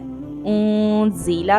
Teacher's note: इख्फा करेंगे, नाक में थोड़ी सी आवाज लेके जाते